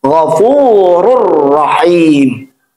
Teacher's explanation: Maka cara bacaannya, tanwin, bunyi tanwinnya masukkan kepada huruf ra, tapi tidak ditahan. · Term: idgham bila gunnah